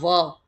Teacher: अब इसके बाद में आ गया है दंत्योष्ठ है वर्ण, दंत्योष्ठ है वर्ण, जो दंत है और ओष्ठ है से बनता है वो होता है व